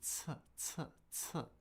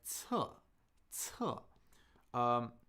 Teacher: So we're letting a little air out. Okay, so there's a little buildup of air and a small puff of air released. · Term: aspirated